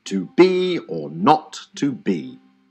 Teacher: this two-syllable foot is like a reverse trokey so the first syllable is unstressed and the second is stressed